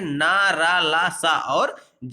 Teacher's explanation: जब आप इनका उच्चारण करते हैं तो आप देखेंगे कि जो हमारी जिह्वा है वह मसूड़ों से टकराती है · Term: मसूड़े से बोले जाने वाले व्यंजन